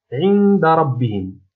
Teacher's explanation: إذا هذه الكلمة هي التي تحتوي على الإخفاء، عندنا نون ساكنة ثم جاء بعد حرف الدال الذي هو من حروف الإخفاء